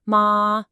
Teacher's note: Second tone rising up